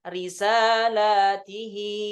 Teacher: Jadi lamnya dibaca panjang, kemudian taknya dikasrahkan dan haknya juga dikasrahkan sehingga haknya jadi dipanjang